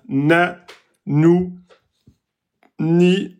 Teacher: N ça va ça va bloquer d'accord parce que du coup l'air ne passe pas avecun d'accord et même quand vous allez dire une vocalisée vous allez dire na nou ni au début de la prononciation vous allez utiliser le nez